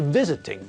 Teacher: visit has got two syllables but again the stress is on the first part of the word not the last part so when we add ing to visit it changes to visiting